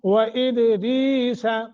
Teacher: دال پہ قلقلہ کرنا ہے، پھر یا ساکن، را کے نیچے زیر ہے، یہ حروف مدہ بن گیا ، تو پڑھنے کا طریقہ یہ ہوگا وَإِدْرِيسَ، ایسے کر کے